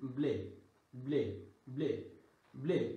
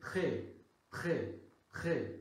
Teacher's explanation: normally একার এ মানে মুখটা বেশি খুলবে না আর এটা হচ্ছে মুখটা খুলে যাবে